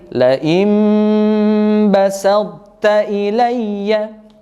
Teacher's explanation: Ya, di sini pengecualian sahabat Al-Qur'an sekalian karena huruf ta yang mati ini sifat hurufnya masih tersisa, ya, masih tersisa. Jadi tebal atau isti'la dari huruf ta atau juga sifat itbaq, ya, tebal itu masih diperdengarkan atau sifatnya masih tersisa.